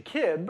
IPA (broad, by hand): kɪb